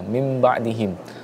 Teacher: nun mati bertemu dengan huruf ba, maka hukum bacaannya adalah iqlab, dengan dibaca dengan menutup bibir kita